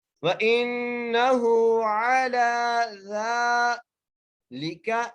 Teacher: زال کو بھی ایک الف کی مقدار کھینچ کے پڑھنا ہے. یہاں پر بڑی احتیاط کرنی ہے, زال کی جگہ زا نہیں پڑھنا, زال ہی پڑھنا ہے. وَإِنَّهُ عَلَى ذَلِكَ, لام کی جزیر ہے, کاف کے اوپر زبر ہے, بغیر کھینچے پڑھنا ہے.